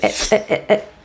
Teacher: the T in it is a glottal te